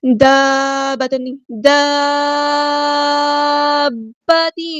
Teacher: مد کے فوراً بعد آپ کو تشدید یعنی شدہ، شد دکھ رہی ہے، تو اس کا مطلب ہے یہ مد لازم ہے. اس کو ہم نے 6 کاؤنٹ لمبا کرنا ہے. تو 6 کاؤنٹ لمبا کرنے کے بعد اس کو آپ نے دیکھنا ہے بعد میں کہ اس کی جو شد ہے وہ بھی اچھے سے پڑھنی ہے.